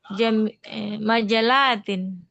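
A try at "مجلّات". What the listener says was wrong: La dikit panjang. Tasydid. Gitu.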